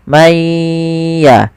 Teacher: maka maya sambil ditahan suara gunnahnya.